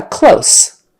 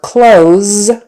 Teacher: close with an S sound on the end contrast this with clothes with a Z on the end